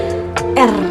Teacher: mendekatkan lidah kepada alveolum atau pangkal gigi. Kemudian lidah menjauh lalu mendekat lagi dan seterusnya secara berulang dengan cepat. Jadi kayak R kan, jadi kan si lidahnya tuh ke atas ke bawah tapi dengan cepat gitu teman-teman.